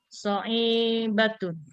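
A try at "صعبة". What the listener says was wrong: Mana so'i? Nggak ada ya-nya. Sa'batun.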